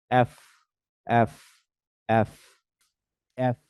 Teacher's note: ওপরের দাঁত এবং নিচের ঠোট